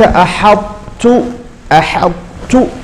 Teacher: فالطاء الأولى تدغم في التاء، فرطتم فرطتم، كأن الطاء يعني ذهبت تماما، بقي رسمها ولكن نطقها ذهب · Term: إدغام